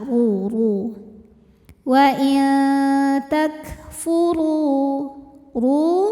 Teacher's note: huruf ro dibunyikan secara tafkhim sebab huruf ro berbaris di atas yaitu baris dah maka cara bacanya ditebalkan cara menebalkannya adalah dengan mengangkat pangkal lidah kita